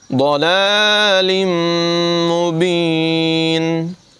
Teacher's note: ضاد حروف مستعلیہ میں سے ہے، اس کو پر پڑھیں گے